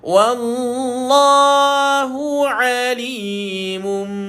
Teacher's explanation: 2 harakat. Mesti kena dengung. Tapi jangan kemam, hanya rapatkan bibir saja. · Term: iqlab